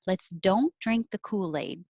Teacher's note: it's a statement so kool-aid will come down and cool aid will connect let's don't drink the kool-aid and